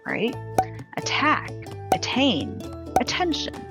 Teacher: if t is within a stressed syllable it doesn't change to a d sound